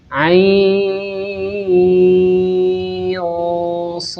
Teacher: Jadi nun sukunnya harus kita samarkan. Ain sh. Jangan sampai kita membaca nun sukun dengan bacaan yang jelas. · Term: ikhfa hakiki